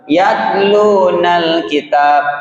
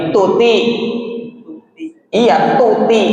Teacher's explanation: harus dihamas, harus dikeluarkan nafasnya